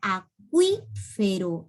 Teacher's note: La segunda cerrada es la que suena más fuerte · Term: dictongo